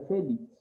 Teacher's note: la mayor fuerza de voz la lleva en fe